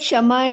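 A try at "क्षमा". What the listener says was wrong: Shama is different. Shama is the Shat Kshama. It's a K in between, in the front.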